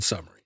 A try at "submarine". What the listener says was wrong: You're kind of swallowing the B. Submarine. I like it.